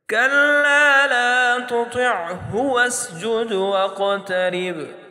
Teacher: با حروف قلقلہ میں سے ہے اور ساکن حالت میں ہے تو اس کو ہم جھٹکے سے پڑھیں گے · قاف کو موٹا بھی پڑھیں گے اور جھٹکے سے بھی پڑھیں گے کیونکہ قاف موٹے حروف میں سے بھی ہے اور یہ حروف قلقلہ میں سے بھی ہے.